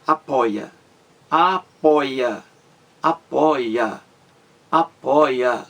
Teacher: são três sílabas apóia a sílaba mais forte aí gente é a penúltima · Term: paroxítona